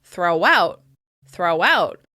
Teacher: Once again, we're linking with that w sound. Throw out becomes throw out, throw out, with the w sound in between the words.